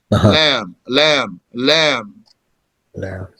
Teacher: low letter, the tongue is down, obstructs the air, and has mouth expansion